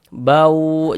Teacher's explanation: Maka ini kita baca bau, jangan dibaca ban tapi dibaca bau, kemudian digunnahkan atau didengungkan. Jadi di bagian baunya itu suaranya itu kita tahan, kita panjangkan sejenaknya, kita gunnahkan sepanjang 2 harokat. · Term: idgham bi gunnah